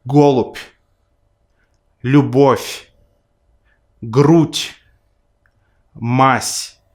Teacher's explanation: Fourth, the soft sign, which is often met in word final positions, doesn't count. Therefore, the voiced consonant that precedes the soft sign still gets devoiced, so the soft sign has no effect here